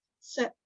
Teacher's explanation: Now we don't really say that P.